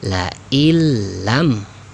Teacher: nun sukunnya ini dileburkan ya, jangan dianggap ya, dihilangkan, sehingga la illam, begitu ya, la illam ya, nunnya hilangkan, nun sukunnya. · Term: idgham bila gunnah